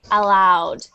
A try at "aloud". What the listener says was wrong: Open lips. Open lips, not rounded lips.